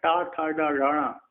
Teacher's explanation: जो मुख का ऊपर का भाग जो गड्ढा होता है वहां से निकलते हैं, वो सिर कहलाता है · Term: टा वर्ग